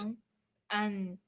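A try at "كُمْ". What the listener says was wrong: You don't need the an anymore. Just kum.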